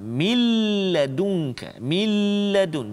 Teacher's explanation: Jadi nun hilang masuk dalam lam, tapi tanpa dengung. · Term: idgham bila gunnah